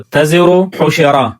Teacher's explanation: تزرو کا را اور حشرا کا را وصل میں موٹے پڑے جاتے ہیں، جبکہ وقف میں باریک پڑے جاتے ہیں